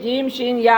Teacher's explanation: जीम शीन या का मखरज जबान का बीच ऊपर के तालु से जीम शीन या अदा होते हैं।